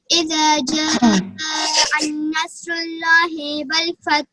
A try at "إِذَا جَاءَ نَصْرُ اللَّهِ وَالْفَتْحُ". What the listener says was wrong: نہیں، ایک غلطی کر دیا آپ نے. اذا جاء نصر اللہ ایسے پڑھنا ہے. آپ نے پڑھا اذا جاء النصر اللہ، ان نہیں پڑھیں گے. اذا جاء نصر اللہ ایسے. میں نے بتایا تھا کہ عربی میں ہر زبر کو چھوٹے آ کی آواز سے، ہر زیر کو چھوٹی ای کی آواز سے اور ہر پیش کو چھوٹی او کی آواز سے پڑھیں گے.